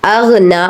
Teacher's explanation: غائن کو غائن ہی پڑھنا ہے، گاف کی آواز نہیں آنی چاہیے۔ نون کو آپ نے 1 الف کے برابر کھینچ کر ادا کرنا ہے، سائن کھینچنے کا ہے اس لیے یہاں پر ہم کھینچ رہے ہیں۔